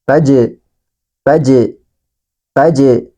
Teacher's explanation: Di antaranya adalah huruf jim. Maka ketika huruf jim ini dalam keadaan sukun atau mati, maka harus dipantulkan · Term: huruf qalqalah